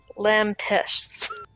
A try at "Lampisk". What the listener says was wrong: Yeah. Lampisk. There's a K on the end.